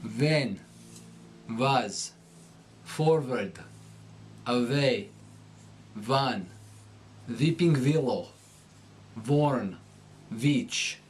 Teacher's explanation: The W will become V